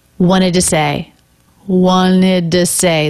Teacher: This first T totally dropped. That's pretty common in this word because it comes after an N. Lots of other people will do that.